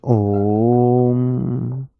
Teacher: इसमें तीन गुना समय लगता है पुलुत में